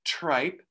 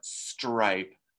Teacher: tripe with the puff of air but stripe with no puff of air